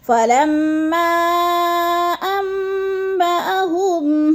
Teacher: مد منفصل 4 الفی مد ہے، اس کو ہم نے 4 حرکات کے برابر لمبا کرنا ہے